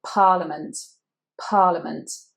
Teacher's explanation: Now here in the middle we have an I. The letter E there is actually a schwa, parliament, parliament. The stress is on the first syllable.